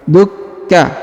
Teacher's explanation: huruf ka berharokat tasdid maka ditahan dan ditekan